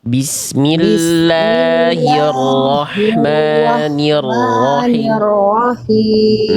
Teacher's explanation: Ro yang terakhir jelaskan jangan ee samar bunyi getarannya.